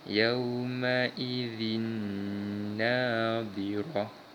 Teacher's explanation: Kita baca dengan bacaan idgham bi gunnah dengan memasukkan bunyi tanwin pada huruf seterusnya dengan dengung